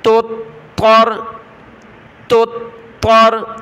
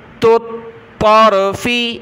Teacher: تا، طا پیش، تو، طارا زبر، طر، طا کو را کے ساتھ، اور طا کو سختی کے ساتھ پڑھنا ہے کیونکہ اس کے اوپر تشدید ہے۔ تو، طر، تو، طر، باریک تا پھر بڑی طا۔